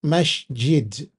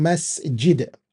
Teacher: We actually literally change this s sound the s sound to sh sound with the j and then we say masjid and that's not correct.